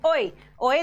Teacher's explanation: ओ और ए आपके अर्ध संवृत में आ जाएंगे